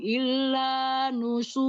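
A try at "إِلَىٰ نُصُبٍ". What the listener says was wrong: Ila, bukan illa. Ila.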